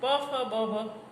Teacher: પ, ફ, બ, ભ ઓષ્ઠ્ય છે